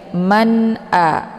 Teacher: cara bacanya nunnya dibaca jelas Ya jelas Bunyi sukunnya atau jelas bunyi n-nya Man A jadi cara bacanya cukup ditekan saja tidak perlu ditahan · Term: izhar halqi